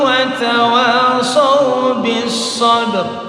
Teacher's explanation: Yang kedua itu masuk dalam lam ta'rif dalam idgham syamsiyah. Tidak dibaca lam yang mati itu langsung bis sabr.